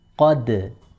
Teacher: Ra-nya ketika disukun, dia memiliki sifat tafkhim atau tebal. Qaf sebelum dal itu juga tebal, sedangkan dal itu sendiri ketika disukun, dia memiliki sifat tipis. Qadru. Tidak boleh qadar, tapi qadru.